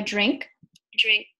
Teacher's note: in the first segment, you can see that there is pre-voicing. So it is a voice D with an aspiration. This whole aperiodic noise here that's a fricative was determined to be an aspiration of D.